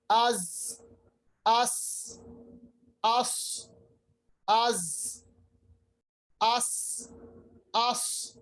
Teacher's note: ये जो है सिफत जो तेज आवाज निकलती है इसको हम विस्लिंग आवाज या अरबी में हम सफीर कहते हैं, चिड़िया की तरह तेज आवाज निकालना।